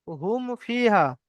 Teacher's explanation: মিম সাকিনের পরে বা আর মিম ছাড়া অন্য অক্ষর অর্থাৎ ফা এসেছে, তাই মিমকে বিনা গুণায় জাহির করে পড়তে হবে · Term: ইজহারে সাফাবি